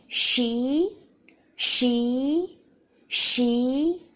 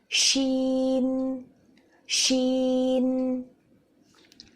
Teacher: شین باریک حرف ہے، اس کی آواز بھی منہ سے باہر آئے گی، بالکل سین کی طرح